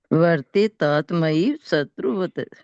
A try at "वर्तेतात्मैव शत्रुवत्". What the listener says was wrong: हाँ, वह तय भी पूरा नहीं है, तय आधा है यहाँ भी। शत्रुवत।